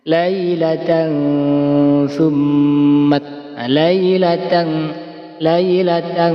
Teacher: Maka disebut bacaan ikhfa hakiki. Cara membacanya samar dan mendengung.